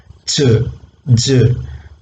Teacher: Air is completely blocked, then it is slowly released. So they are called affricates.